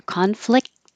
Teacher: don't pronounce the T you just hold it there